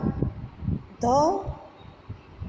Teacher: એમાંનો જે ધ છે એ દેવનાગરી વર્ણમાળાનો 19મો અક્ષર છે અને ત વર્ગનો 4થો વ્યંજન છે. જો ભાષા વિજ્ઞાનની દ્રષ્ટિએ જોઈએ તો ધ એ દંત્ય, સ્પર્શ, ઘોષ તથા મહાપ્રાણ ધ્વનિ છે.